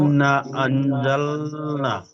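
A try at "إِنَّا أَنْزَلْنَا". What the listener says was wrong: তো এই ইন্না একটু টান দিতে হবে, বুঝলেন, এখানে 2 থেকে 3 আলিফ টান দিতে হবে। ইন্না, ইনে গুন্না হবে।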